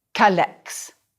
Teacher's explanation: Notice that I dropped the E of que before the vowels.